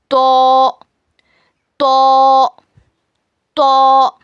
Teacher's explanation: ज़बान की नोक को सामने के दो दांतों के जड़ में लगाने से तो अदा होता है. It is pronounced when the tip of your tongue touch the roots of your tooth of front teeth.